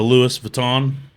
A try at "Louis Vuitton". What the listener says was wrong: It's Louis Vuitton. The S is kind of silent. Well, it is silent.